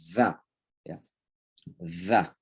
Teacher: Jadi letakkan ujung lidah di antara dua gigi atas gigi bawah lalu didorong pakai udara.